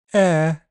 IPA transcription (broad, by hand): ɛː